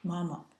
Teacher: ma pronounced in the first tone and it's repeated twice